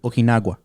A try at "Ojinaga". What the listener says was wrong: No, Ojinaga. No W or U or whatever that is.